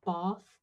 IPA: bɑ:θ, ba:θ